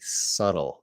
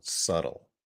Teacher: That B is silent, so you never want to say that B. Subtle, no B sound.